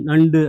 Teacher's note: இந்த மகரம் இந்த உகரம் வந்து சாதாரணமா உ அப்படின்னு சொல்ற அந்த ஓசையை விட இதுல வரும்போது குறுகி ஒளிக்கும் நண்டு அப்படின்னா ஒரு அரை மாத்திரை அளவுதான் ஒளிக்கும் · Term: குற்றியல் உகரம்